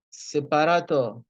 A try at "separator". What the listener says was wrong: No, it's not pa. It's a. Separator.